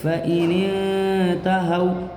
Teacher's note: واو ساکن سے پہلے ہا کے اوپر زبر ہے، واو لین ہوگا، واو لین کو نرم آواز کے ساتھ جلدی سے پڑھیں گے